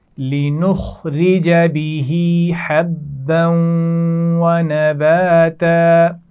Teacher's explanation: حبًّا با کے اوپر تنوین ہے اور اس کے بعد واو ہے، تو یہاں پر ہم غنہ بھی کریں گے اور ملا کر پڑھیں گے.